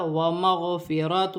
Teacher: را پر زبر کی حرکت ہے، را موٹی پڑھی جائے گی. دو پیش کی تنوین کے بعد میم مشدد آ رہی ہے، دو پیش کی تنوین میں غنہ بھی کیا جائے گا، ملا کر بھی پڑھا جائے گا.